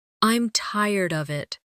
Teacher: with of sounding almost like uhv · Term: weak forms